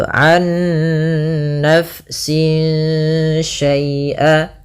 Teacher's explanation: kita harus membacanya nunnya masukkan ke nun kedua dan disertai dengan gunnah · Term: idgham bi gunnah